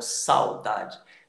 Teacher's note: o a está se destacando, o u está fraquinho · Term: semivogal